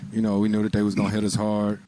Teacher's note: rise on hard because he's not done talking or it sounds like he's not done talking